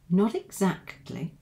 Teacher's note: you've got the T linked to the vowel sound of e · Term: linking